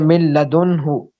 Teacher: इसमें नाक में जरा भी आवाज नहीं जाती, खालिस लाम की तरह पढ़ते हैं, और इसको इदगाम बिला गुन्ना कहते हैं।